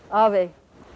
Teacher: this V the thing that's written with the V in Spanish it's not pronounced like an English V it's a bilabial fricative